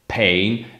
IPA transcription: pheɪn